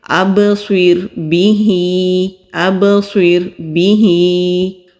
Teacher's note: را ساکن سے پہلے زیر ہے تو را کو باریک پڑھیں گے۔